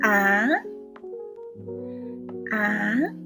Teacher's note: The second tone starts from a low pitch to a higher one. It's a rising tone